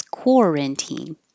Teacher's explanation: core has to have rounded lips